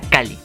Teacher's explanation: Claro que al momento de pronunciarlo se escuchará como una sola L.